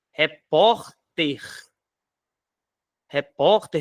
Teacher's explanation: veja que a sílaba tônica tá na penúltima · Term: paroxítono